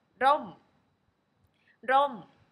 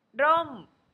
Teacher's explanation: Rom is short vowel, and the tone mark is falling tone.